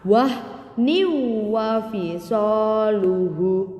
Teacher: Jadi tanwinnya ini dimasukkan ke dalam huruf waw, ya. Makanya di atas waw ini seolah-olah ada tasjidnya. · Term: idgham biguna